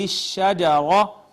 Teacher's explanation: را مفخم پڑھی جائے گی اس وجہ سے کہ مفتوح ہے